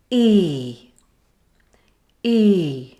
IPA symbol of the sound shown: iː